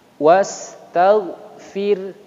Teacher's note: huruf ra yang sukun, harokat sebelumnya kasrah maka dibaca tipis